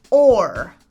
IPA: ɔɚ